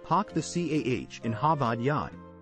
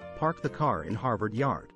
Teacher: Boston is known for its unique accent and linguistic features, including dropping the R sound at the end of words and saying, park the CAH in Harvard Yard, instead of park the car in Harvard Yard.